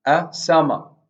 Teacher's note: the first syllable of summer will gain high prosody. A summer, and then the second syllable of the word summer drops.